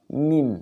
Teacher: Dua perut bibir bagian tengah. Napasnya ditahan. Mim. Jadi nafasnya tidak keluar ya.